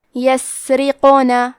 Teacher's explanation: قاف حروف تفخیم میں سے ہے، تو ہم یہ حرف کو موٹی آواز میں پڑھیں گے کیونکہ اس پہ جزم ہے، لہذا یہاں قاف کا حکم ہے قلقلہ. قلقلہ کا معنی ہے حرف ساکن کو ہلانا، تو ہم حرف القاف کو ہلاتے ہوئے یہ کلمہ کو پڑھیں گے